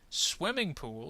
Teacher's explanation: swimming is going to get the accent there